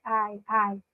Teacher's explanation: para demonstrar a emoção eu subo um pouquinho o Tom de voz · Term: entonação